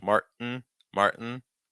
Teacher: Notice the held T plus the N.